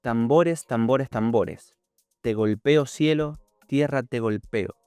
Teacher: La repetición de la oclusiva dental T y la bilabial M refuerza la repercusión rítmica del poema.